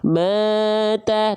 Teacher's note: nada saya flat, tapi kadarnya tetap 2 kali ayun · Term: mad tabi'i